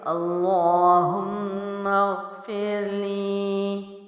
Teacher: پھر ٹھیک ہے، اللہم پھر لی کو میں لمبا کر رہی ہوں کیونکہ یا ساکن ہے، یا ساکن سے پہلے حرف کے نیچے زیر ہو تو اس کو لمبا کر کے یعنی ایک الف لمبا کر کے پڑھا جاتا ہے، یہ یا مد ہے۔